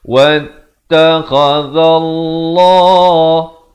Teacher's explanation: lafz jalalah di sini dibaca tebal 2 harakat.